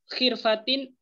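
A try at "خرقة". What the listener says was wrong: Khirqah, bukan khirpah. Khirqah. Di antum huruf fa, bukan huruf qa.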